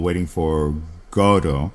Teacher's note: on Broadway. Uh, interestingly they pronounce the name Godo Got T with an accent on the first syllable waiting for Godo, you know, like with an emphasis on God